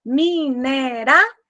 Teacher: Mineração é a palavra que possui um ditongo decrescente nasal. Decrescente, porque primeiro começou pelo som mais forte, a vogal, depois a semivogal. · A é sempre vogal, e O com som de U, semivogal.